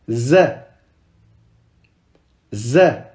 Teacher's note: c'est un Z normal, on met pas la langue entre les dents